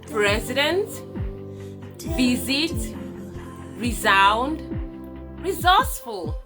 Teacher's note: These voice sounds, because S is standing between these voice sounds, it rather makes the S to buzz, to produce a buzz sound, like Z and not S